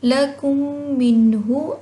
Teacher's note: نون پہ اظہار ہوگا کیونکہ ہا جو ہے وہ حروف ہلکی میں سے ہے۔ ہم نے یہ پڑھا تھا کہ نون ساکن یا تنوین کے بعد اگر حروف ہلکی میں سے کوئی حرف آ جائے تو وہاں پہ اظہار ہوگا، غنہ نہیں ہوگا، ٹھیک ہے۔